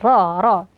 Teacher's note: ro di sini karena berharakat fathah maka dibaca tebal